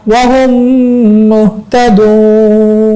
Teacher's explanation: এই যে একটা মিম এই যে একটা মিম সাথে সাথে মানে পাশাপাশি দুইটা মিম আসছে তাহলে প্রথম মিমটা এখন আর পড়তে হবে না দ্বিতীয় মিমটা পড়লে হবে হার সাথে মিম পড়বো দ্বিতীয় মিমটা প্রথম মিমটা আর পড়তে হবে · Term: ইদগাম